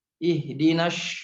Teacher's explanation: Atau shad jadi sya, misalnya ihdinas, ini banyak sering terdengar ihdinas siratal mustaqim